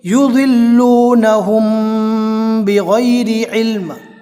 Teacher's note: یہاں پر آپ دیکھ سکتے ہیں میم ساکن کے بعد میم ساکن کے اخفا کا جو ایک حروف ہے با وہ آیا ہے، لہٰذا یہاں پر میم ساکن کا اخفا ہوگا. میم ساکن کا اخفا کا مطلب یہ ہوتا ہے گنہ کے ساتھ پڑھنا.